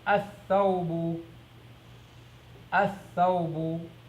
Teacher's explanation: you do not hear the lam, and instead, the first letter of that word is going to be mushaddada. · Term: sun letter